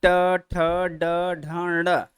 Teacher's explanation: तो जीभ एकदम पीछे गई, ऊपर चिकना वाले भाग को टच की, वापस लौट आए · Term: मूर्धा